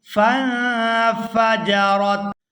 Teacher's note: فا کو نون ساکن کے ساتھ ملائیں گے تو اخفا کریں گے